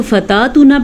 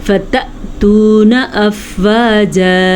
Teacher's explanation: اچھا، اگر آپ اس کو فتاتونا پڑھتے ہیں تو آپ غلط پڑھتے ہیں، فتاتونا تب ہوتا جب اس الف کے اوپر یہ ساکن نہ ہوتا، الف کے اوپر ساکن ہونے کی وجہ سے یہاں پہ جھٹکے کی کیفیت پیدا ہوگی،